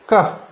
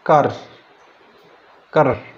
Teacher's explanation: আমাদের ভাওয়ালের পরে যে আর সাউন্ডটি ওই পূর্বের ভাওয়াল সাউন্ডটিকে কন্ট্রোল করে। যেমন CAR ব্রিটিশদের উচ্চারণ করে কা, আমেরিকানদের উচ্চারণ করে কার